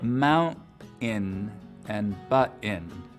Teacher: with just a pure glottal stop for that T sound in the middle of the word